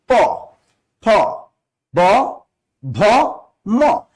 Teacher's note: প, ফ, ব, ভ, ম, দুই ঠোঁট কিন্তু ব্যবহার করতেছি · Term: ওষ্ঠধ্বনি